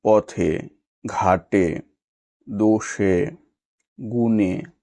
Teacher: শব্দের অন্তে এ সংবৃত হয়